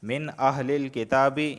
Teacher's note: یہاں نون ساکن کے بعد حمزہ آیا ہے تو اظہار ہوگا، غنہ نہیں ہوگا